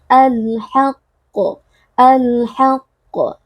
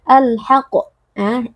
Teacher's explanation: pada huruf qaf yang bertasdid huruf qaf memiliki sifat Qalqalah nah ketika kita wakaf pada huruf Qalqalah yang bertasydid maka kita beri sedikit penekanan